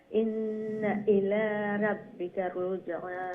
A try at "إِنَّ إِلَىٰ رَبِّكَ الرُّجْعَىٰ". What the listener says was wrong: রব্বিকার, ও যে রা ডাবল রা নেয়নি কেন, তো ডাবল অক্ষরে উচ্চারণ করতে একটু ধাক্কা দিয়ে একটু শক্ত করিয়া যাতে দুইটা রা উচ্চারণ হয়। ইন্না ইলা রব্বিকার রুজআ খুকেছেন।